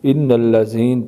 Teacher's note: وقف کرتے ہیں تو نون کو زبر کی جگہ ساکن کریں گے